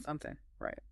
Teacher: Something often becomes something. That final G sound just drops off.